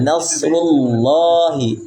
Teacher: Nasrullah lamnya dibaca dua harakat